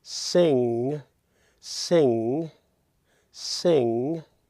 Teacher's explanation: that it what that does with the short I found is it raises the middle of your tongue to your soft palate and turns it in almost to a long e